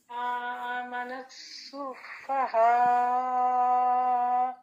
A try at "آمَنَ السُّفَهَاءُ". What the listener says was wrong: ٹھیک ہے، ابھی تو آپ نے اس کو زیادہ لمبا کیا ہے، تو سمپل جو ہے 2 کاؤنٹس ہے. آمن السفہاء. اینڈ پہ جو حمزہ ہے سفہا کا، جب بھی حمزہ پر ہم وقف کرتے ہیں، سٹاپ کرتے ہیں اور حمزہ کو ہم ساکن کرتے ہیں تو اس کی آواز آتی ہے تھوڑی سی سختی سے.